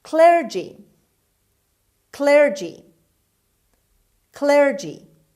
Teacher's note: the stress is at the beginning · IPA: /ˈklɜːrdʒi/